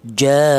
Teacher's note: Ini dinamakan mad wajib muttasil yaitu panjangnya ee dua alif setengah atau lima harakat atau lima ketukan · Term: mat wajib muttasil